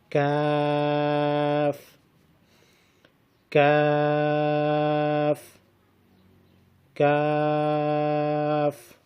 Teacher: زبان کی جڑ جب سخت تالو سے لگے تو اس سے کاف ادا ہوتا ہے۔